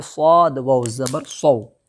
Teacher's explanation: صوم، صوم، صاد واو زبر صو، واو لین ہوگا اس لیے کہ واو ساکن سے پہلے صاد کے اوپر زبر ہے، اس لیے واو لین ہوگا، واو لین کو نرم آواز کے ساتھ جلدی ادا کریں گے